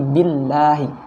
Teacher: Nah, itu dibaca tebal. Tapi kalau sebelumnya didahului oleh harokat kasroh atau tipis, maka dibacanya tipis huruf lamnya. Jadi billahi, bukan billahi ya.